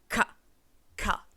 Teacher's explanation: K and G are velar sounds. What that means is they're made in the back of the throat where we want that R, especially for those bunch positions.